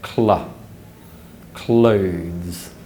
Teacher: together this means pronouncing both consonants at the same time so as the back of the tongue blocks the air for the k sound the front of the tongue Rises for the following La sound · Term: consonant cluster